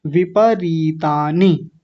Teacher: और यहां छोटी इ यहां छोटी इ। तो जहां छोटी इ है वो जल्दी बोलनी है। जहां बड़ी है वो थोड़ा लंबा खींचना है। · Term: बड़ी ई की मात्रा